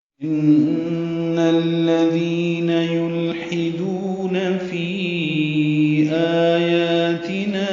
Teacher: ذال نرمی سے پڑھیں گے، ذی یا مدہ ہے تو حرکات لمبا کریں گے